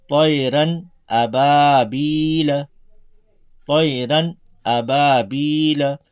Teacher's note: نہ اس میں ہم کو طیران کرنا ہے، نہ اور کسی طرح سے اس میں کچھ وقت لگانا ہے، بلکہ نارمل طریقے سے سیدھا سیدھا اس کو پڑھنا ہے، یعنی ظاہر کر کے، تنوین کو ظاہر کر کے پڑھنا ہے، بلا غنہ کے جلد پڑھیں گے۔ اس کو اظہار کہتے ہیں، اس کو ظاہر کرنا کہتے ہیں۔